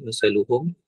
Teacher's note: Jadi kalau tengok tajwid dia, masaluhum mimati bertemu dengan kaf. Mimati bertemu dengan kaf itu izhar syafawi, tak ada hukum lah, maksudnya tak perlu dengung lah, baca macam biasa je, masaluhum.